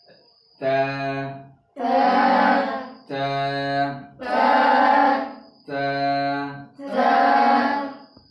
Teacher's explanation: এই হরফটা হামসের হরফ হওয়ার কারণে একটু বাতাস চালু রাখতে হবে।